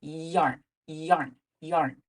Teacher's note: Now for that other mouth shape, for the y, as in yarn, the tongue is lifted in a way that lets the air flow with just that little extra y sound.